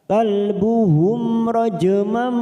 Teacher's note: ada huruf jim sukun qalqalah sugro karena mati di tengah kalimat, kita pantulkan